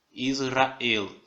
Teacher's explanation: a ênfase dela é na última sílaba, no el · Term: miluel